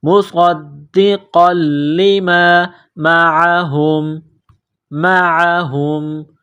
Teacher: مصدقا لما، قاف کو موٹا کرنا ہے، نقطہ والا قاف ہے، قاف کو لام کے ساتھ ملائیں گے، لام کو دبانا ہے